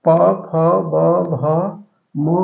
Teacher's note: प फ ब भ म कहते हैं इनका उच्चारण स्थान ओट है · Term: ओष्ठ